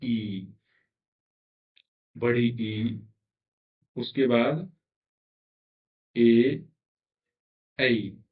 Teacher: अग्र स्वर का मतलब है जो जिह्वा के अग्र भाग से उच्चारित होते हैं।